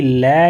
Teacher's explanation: लय जो व्यंजन है इसको पार्श्विक व्यंजन भी बोला जाता है। इसके साथ ही लय व्यंजन जो है दंत्य भी बोला जाता है, लय व्यंजन को वर्तस्य व्यंजन भी बोला जाता है।